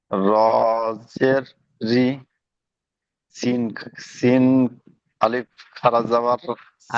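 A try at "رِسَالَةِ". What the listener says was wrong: আলিফ নয়, এখানে আলিফ আলিফ তো নেই। সিন খাড়া জাবার সা।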